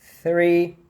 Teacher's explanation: Esse TH travado, não existe, tá? Então, o THR é sempre com o TH voiceless, é sempre com o TH soprado